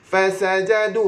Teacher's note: fa gigi atas sentuh bibir bawah